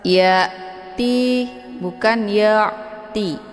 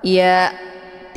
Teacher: Ya'ti ini ada hamzah sukun. Cara bacanya, hamzahnya ditekan, kemudian bacaannya jelas.